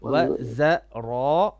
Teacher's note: za is flat. Make your za flat. za and then ra is heavy.